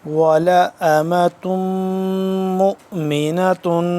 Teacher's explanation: اس پہ تنوین ہے اور میم ہے مشدد، اس پہ ہم غنہ کریں گے